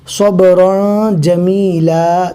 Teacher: فاصبر صبرا جمیلا، اب دیکھ سکتے یہاں پر تنوین کے بعد اقفا کے 15 حروف میں سے جیم آ گیا، صبرا جمیلا، تو یہاں پر بھی تنوین کو ناک میں پڑھیں گے